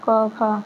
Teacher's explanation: वर्ग का पहला और दूसरा वर्ण क्या होंगे अघोष व्यंजन इसमें कोई कंपन नहीं है